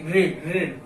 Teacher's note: मूर्धन्य, यानी कि जीभ जो है पलट जाएगी, ऐसे हो जाएगी, जीभ जो है थोड़ा पलटने लगी, ऋण, जीभ जो है ऊपर जो है मुड़ने लगती है, यानी कि मूर्धन्य।